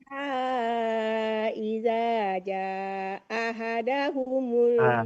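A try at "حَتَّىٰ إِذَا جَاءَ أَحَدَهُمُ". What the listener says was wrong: Bukan langsung ahada, tapi jaa ahada. Ahada, bukan ahada. Hati-hati mandi. A-nya 2 kali, hamzahnya. Ahada.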